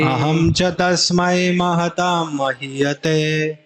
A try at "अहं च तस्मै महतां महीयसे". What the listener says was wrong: ते कहाँ से आ गया?